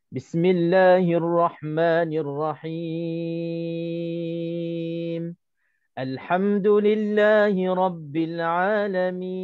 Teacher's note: Bila kita berhenti cukup syarat untuk ma'arid sukun, maka kita kena panjangkan 6 harakat.